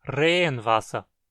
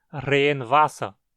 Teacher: as duas palavras soam como uma palavra só, que é acentuada no primeiro radical.